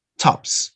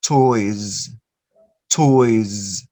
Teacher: the s that you write you have to make it in a vibrated form so what is the vibrated form z toys toys and the